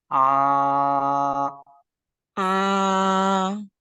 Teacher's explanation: Jadi jangan diganggu dengan pita suara. Pita suara posisinya tetap terbuka selama kita ucapkan huruf ain.